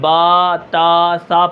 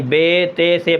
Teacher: معروف پڑھنا ہے، یعنی با تا سا پڑھنا ہے، مجہول پڑھنے سے بچنا ہے، یعنی بے تے سے پڑھنے سے ہم نے کیا کرنا ہے؟